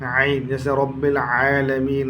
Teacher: ऐन हलक का दरमियानी हिस्सा